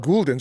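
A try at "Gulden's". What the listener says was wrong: Why is that Goul? Goul is G-O-U-L. Gull, like a seagull.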